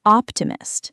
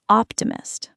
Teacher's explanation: The stress moves to the first syllable.